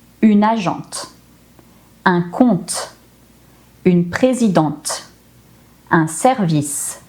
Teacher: I pronounced the consonant that came just before the final E.